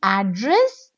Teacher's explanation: address first syllable I'm stretching address it's a noun